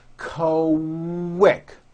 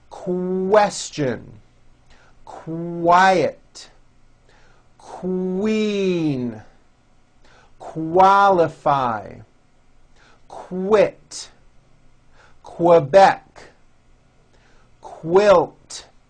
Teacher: q sounds are made with the K sound and the W sound · the word quick is pronounced with a K and a strong W sound. Quick, like that.